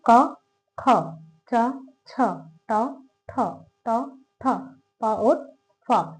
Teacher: अघोष वर्ण जिसमें कंपन नहीं होता है